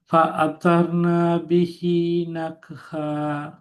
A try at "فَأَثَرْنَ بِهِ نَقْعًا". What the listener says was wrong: نقع இந்த ந வேணும். فأثرنا எங்கிட்ட கூடாது. فأثرن به نقعا.